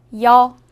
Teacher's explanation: 여는 먼저 이를 소리 내다가 바로 이어서 어를 소리 내며 발음합니다. 이와 어를 순서대로 빠르게 말해요.